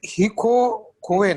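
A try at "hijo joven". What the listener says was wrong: Silent. H is silent.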